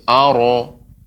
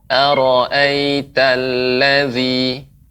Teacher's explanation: pengucapan ara Ibu tidak dengan memunculkan bibir. Aro. Akan tetapi ya tetap ya bibir kita datar.